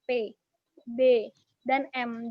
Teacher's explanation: bilabial itu adalah ketika kedua bibir atas dan bibir bawah itu bertemu